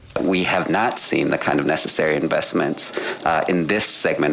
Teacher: I didn't hear a word he said because of the amount of vocal fry